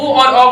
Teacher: कंठोष् यानी ओ और औ यानी कंठ और ओष्ठ का सहारा लेंगे तभी ओ और औ का उच्चारण कर सकते हैं। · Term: कंठोज